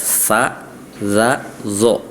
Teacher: tsa ujung lidahnya nempel ke gigi bagian atas ini seri atas